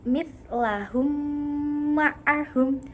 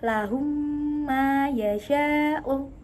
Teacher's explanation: mim yang pertama mati dimasukkan kepada mim yang kedua dengan disertai dengung atau hunnah. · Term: idgham misli